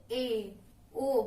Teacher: जैसे ए ओ बोलते हैं तो हमारा मुख द्वार क्या है, आधा बंद है। इसी को हम कहेंगे अर्ध संवृत।